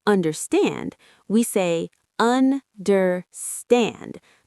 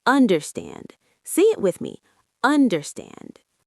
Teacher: The last part is the strongest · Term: word stress